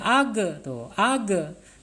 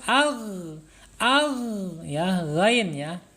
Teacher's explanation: Tidak mempunyai sifat qalqalah ghain ini.